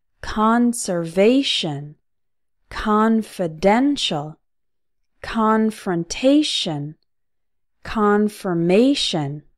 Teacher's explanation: Each of the words in the second column has a stress on both the first and third syllable.